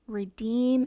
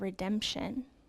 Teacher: the long E sound changed to a short E sound.